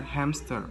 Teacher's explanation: most of us will say and hear hamster with a P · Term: Insertion